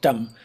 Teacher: you could pronounce it as somewhere between a T and a D. So it's a more palatal sound.